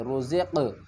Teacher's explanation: رزقنا من قبل، را پیش رو، زا کو قاف سے ملائیں گے، قاف کے اوپر قلقلہ کریں گے